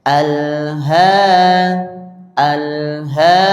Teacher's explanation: kalau fathahnya tegak berdiri bacanya panjang atau mad. Panjangnya berapa? Dua harakat. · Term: fathah berdiri